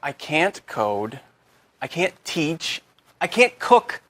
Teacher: Instead of pronouncing the T, your tongue just comes to a stop against the hard part of the roof of your mouth just behind the upper front teeth. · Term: held T